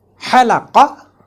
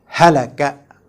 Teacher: The first word starts with the letter Ha, which is articulated from Wastul Halaq, and the second one starts with a Ha, which is articulated from Aqsal Halaq.